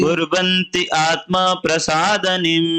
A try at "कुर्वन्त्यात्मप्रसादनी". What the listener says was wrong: कुर्वन्त्यात्म प्रसादनी। देखिए लास्ट को तोड़ के नहीं बोले, कुर्वन्त्या, कुर्वन्ती है, कुर्वन्त्यात्म प्रसादनी।